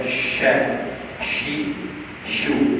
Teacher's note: kalau huruf syid kita gunakan sifat syiddah dia akan bunyi ca